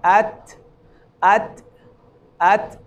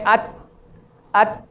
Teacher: ایک بات اور جو تا کے متعلق ہے, عربی زبان میں جو صحیح ادائیگی ہے تا کی, اس میں یہ ہے کہ تھوڑا سا تا کی ادائیگی میں ابتدا میں کچھ سختی ہوتی ہے ادائیگی میں, اور انتہا میں تھوڑا سا نرمی ہوتی ہے. مثلا تھوڑا سا ہوا نکلتی ہے تا کی ادائیگی میں